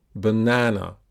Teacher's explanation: So the vowel in the second syllable is longer. That is because the second syllable, nan, is the stressed syllable of the word. The vowel sound in a stressed syllable is the clearest and longest vowel in the word, the peak vowel. · So the letter A occurs 3 times, but in the second syllable, it's longer.